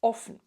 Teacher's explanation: Offen, on a deux F, donc la voyelle avant va être courte. Vous pouvez retenir tout simplement, il y a déjà deux consonnes, on n'a plus de place, la voyelle n'a plus de place, donc elle est toute courte. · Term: voyelle courte